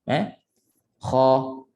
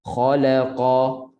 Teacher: Kha tebal, kha, makhrajnya hujung kerongkong. Bunyi macam nak keluarkan sesuatu daripada tekak.